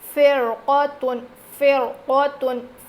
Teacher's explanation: را ساکن سے پہلے زیر ہو جائے اور اس کے بعد حروف مستعلیہ میں سے قاف آیا ہے، تو اس حال میں ہم اس را کو باریک پڑھنے کے بجائے موٹا پڑھیں گے